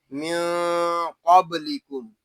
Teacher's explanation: یہاں نون ساکن میں اخفا اس لیے ہو رہا ہے کہ نون ساکن کے بعد حروف اخفا میں سے قاف آ گیا ہے۔ قاف کو پر یعنی موٹا پڑھیں گے کیونکہ یہ قاف حروف مستعلیہ میں سے ہے · قاف کو پر یعنی موٹا پڑھیں گے کیونکہ یہ قاف حروف مستعلیہ میں سے ہے۔ با ساکن ہے، اس میں قلقلہ خوب ظاہر کریں گے، اس کو قب یا قب ایسے نہیں پڑھیں گے، اس کو پڑھیں گے من قبلکم۔